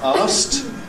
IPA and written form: ɑːst (asked)